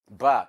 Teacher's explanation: For example, ba is by a bilabial sound because two articulators are meeting and they are upper lip and lower lip